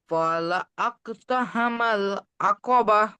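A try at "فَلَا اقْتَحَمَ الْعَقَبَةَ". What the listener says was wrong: ফালা আক হবে না, ফালাক, ফা জবর ফা, লাম কফ জবর লাক, ফালাক।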